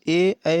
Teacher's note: इनको कंठ तालव्य कहा जाता है क्योंकि यह कंठ और तालव्य से मिलकर इनकी ध्वनि होती है तो इसलिए इन्हें कंठ तालव्य कहा गया तो इस क्वेश्चन का